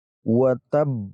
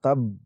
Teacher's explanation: tidak hanya kita tekan karena mempunyai tasydid, tapi kita juga memantulkan huruf ba ini. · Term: huruf qalqalah